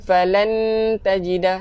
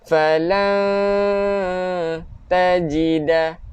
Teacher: Bacaannya lidah tergantung, lidah kita di tengah-tengah. Bermaksud jangan kena dilelangit. Bukan falan tajida, salah. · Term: ikhfa haqiqi